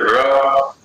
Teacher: जैसे ट में तो ठीक है, र, अब र में जीव आगे की ओर भाग रही है, माने जहां से ट का उच्चारण कर रहे हैं वहीं से र बोलेंगे, जीभ खड़ी हो जाएगी। र तो दंतमूल की ओर जा रही है जीभ लगभग